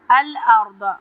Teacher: را پہ تفخیم کریں گے ہم، دعات پہ بھی تفخیم کریں گے یعنی موٹا پڑھیں گے۔ فرا الف مدہ ہے یہاں پہ، را کو لمبا پڑھیں گے اور تفخیم کریں گے۔